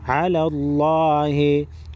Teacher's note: लफ्ज़ अल्लाह के लाम को मोटा करेंगे